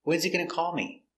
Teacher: when is the important word it's stressed he is not important it's not stressed so the H is silent together wesy wesy when's he going